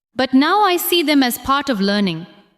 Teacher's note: Stress now, see, part, and learning.